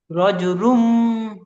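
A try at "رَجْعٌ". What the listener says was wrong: রজ রুম না, রজ উ আ উ ই, গুলার মাঝখান রজ রজ বলবেন, আপনি বলছেন রুন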